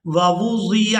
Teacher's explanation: دو واو ایک ہی جگہ پر جمع ہو گئی ہیں تو ہم نے ان کو بالکل واضح کر کے ادا کرنا ہے